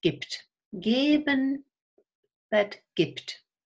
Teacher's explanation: the B is pronounced P, gibt, because the voiceless T follows and then this becomes devoiced